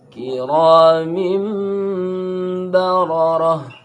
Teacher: Ra dibaca tebal, kinya tipis